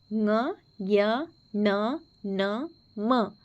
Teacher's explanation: ಅನುನಾಸಿಕ ಅಕ್ಷರಗಳು ಅಂತಂದರೆ ಮೂಗಿನ ಸಹಾಯದಿಂದ ಉಚ್ಚರಿಸಲಾಗುವ ವ್ಯಂಜನಗಳು ಅನುನಾಸಿಕ ಅಕ್ಷರಗಳು ಅಂತ ಕರಿತೀವಿ